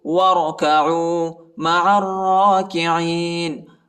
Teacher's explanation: وَرَكَعُوا، عین وہ پیش عو، وَرَكَعُوا مَعَ الرَّاكِعِينَ، عین کو را کے ساتھ ملائیں گے، الف اور لام نہیں پڑھا جاتا اور را کو شدت کے ساتھ پڑھیں گے اور موٹا بھی پڑھیں گے۔